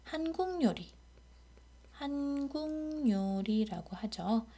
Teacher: 기역 다음에 요라고 반모음 이로 시작하는 말이 오니까 먼저 니은 첨가가 일어나요. 그리고 니은 앞에 기역이 왔기 때문에 비음화가 일어날 조건이 형성돼서 한국요리라고 발음하게 되는 것이죠.